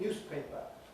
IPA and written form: ˈnjuːspeɪpə (newspaper)